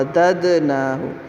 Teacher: دال کے اوپر قلقلہ کریں گے، دال ساکن ہے